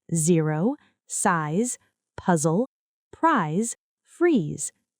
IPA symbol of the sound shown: z